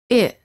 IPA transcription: ɪ